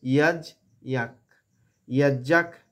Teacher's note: একটা বিসর্গর জায়গায় আমরা একটা খয়ের উচ্চারণ করব, অর্ধেক খ, খয়ের সাউন্ড হবে, খ হবে না।